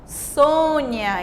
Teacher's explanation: a palavra Sônia, nome de pessoa, tem o O um pouco mais fechado